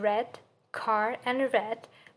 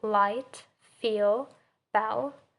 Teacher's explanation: when you're saying R, your tongue is a little curled inside through our mouth, but when you are saying L, it's just directly through our upper teeth